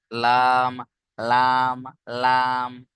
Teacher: জিভের আগার কিনারা সামনের উপরের দুই পাশের দাঁতের গোড়ার সাথে, সামনের উপরের দুই পাশের, সামনের উপরের দুই পাশের গোড়ার দাঁতের সাথে লেগে উচ্চারণ হবে লাম।